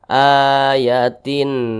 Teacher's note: dibaca jelas tidak berdengung ayatin tidak berdengung jangan ditahan jangan jangan dibaca ayatin Nah itu